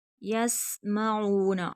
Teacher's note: سین باریک سیٹی نکلے گی، یسمعون، عین حرف ہلکی ہے، کھینچ کر پڑھیں گے، واو مدہ ہے۔